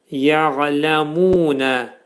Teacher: Ayn hərfinin məxrəci boğazın ortasından çıxarılır.